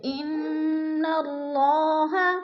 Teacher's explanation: نون مشدد ہے اس لیے نون کو سختی سے جما کر پڑھیں گے، یعنی غنہ کریں گے